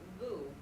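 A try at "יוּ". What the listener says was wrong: Well, it's not boo, it's a yod, so it's, you.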